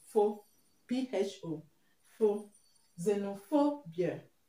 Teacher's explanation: You stress the first syllable. So the stress is going to be on pho